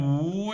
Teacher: It's just like someone is crying third tone.